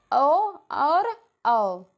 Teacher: ओ और औ जो है वो कंठोष्ठ में आते हैं।